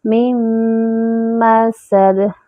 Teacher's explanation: من مسد، میم پہ جو ہے وہ جمع ہوگا، سین میں سیٹی کی آواز آئے گی اور دال پہ قلقلہ کریں گے.